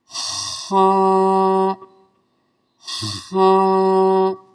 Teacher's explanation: گلے میں تھوڑا سا خراش کرتے ہوئے